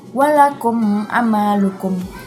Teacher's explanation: ada huruf mim mati bertemu dengan huruf ain. Dibacanya jelas dengan mulut tertutup. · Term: izhar syafawi